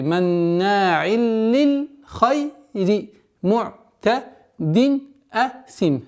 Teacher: Первая назализация в размере двухогласовок у нас над буквой нун. Потом у нас переходит ассимиляция без назализации. · Здесь у нас правило изгар, четкое произношение танвин кесра. И при остановке танвин кесра переходит у нас в данной ситуации в сукун асим, и долгота в размере двухогласовок кесра удлиняем.